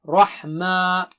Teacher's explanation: را موٹا ہے باقی سب باریک ہیں